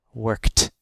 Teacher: when verbs end in voiceless sounds like K, the ED sounds like the voiceless T.